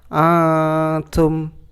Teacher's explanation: karena ada nun mati bertemu huruf ta, bacanya samar-samar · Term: ikhfa